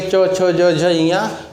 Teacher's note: च वर्ग में अगर सबको पढ़ेंगे च छ ज झ इया तो उसमें तालु झंझनाहट मतलब तालु स्पर्श हो रहा है, इसको तालु बोलेंगे।